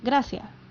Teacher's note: It's very common for Chileans to aspirate or eat their S's. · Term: aspirated S